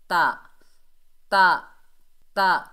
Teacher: جب زبان کی نوک اوپر والے دانتوں کی جڑ سے لگتی ہے تو تا ادا ہوتا ہے